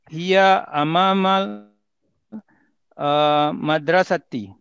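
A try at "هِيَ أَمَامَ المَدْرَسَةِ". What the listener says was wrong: Jaid jidan.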